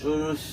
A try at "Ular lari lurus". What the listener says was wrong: Nah, menekan di huruf R, jangan berusaha betul. tapi dicoba saja rileks, Pak. Ular lari lurus.